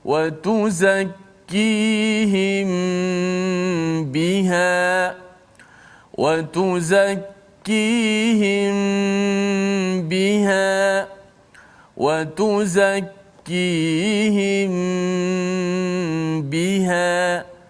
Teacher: Apabila mim mati bertemu dengan satu huruf saja, hurufnya huruf ba, maka kita baca dengan secara dengungkan huruf tersebut. Dan pastikan bibir kita sentuh, bersentuhan. Jangan terlalu rapat sehingga macam bunyi kemam, kan? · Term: ikhfa syafawi